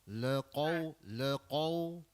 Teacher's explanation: Bukan kau qaw dari dalam dalam kerongkong. dalam sikit. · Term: huruf qaf